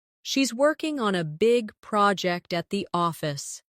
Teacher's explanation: Stress, working, big, project, and office. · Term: stressed and unstressed syllables